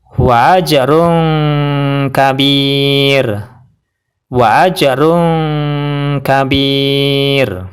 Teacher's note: sebelumnya adalah ya yang berharakat sukun yaitu yang berwarna merah dan rnya dibaca tarq atau tipis Yaitu cukup pakai lidah saja dan bibir tidak terangkat